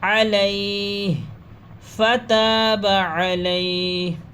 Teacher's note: رکیں گے، سانس توڑیں گے تو ہا کی تھوڑی سی آواز نکلے گی